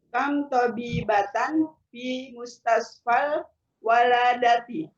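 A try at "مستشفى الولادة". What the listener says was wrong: Bukan waladah, yang betul wiladah, Bu.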